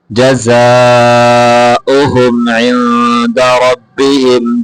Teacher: اس کو اوہم لمبا کر کے نہیں پڑھیں گے